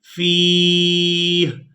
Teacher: إذا جمعناهم ليوم لا ريب فيه، یہ ہے وقف کی صورت، وقف کرتے ہوئے ہا کو ساکن کر دیں گے